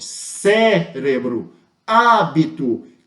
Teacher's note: eu tenho a antepenúltima sílaba tônica mais forte